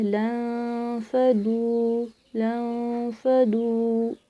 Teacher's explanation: دواد کو موٹا پڑھا ہے، واو مدد اس کو میں نے کھینچ کے پڑھا ہے. آپ لوگوں نے ایسے ہی پڑھنا ہے.